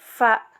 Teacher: bibir bawah ditekan ke gigi seri bagian atas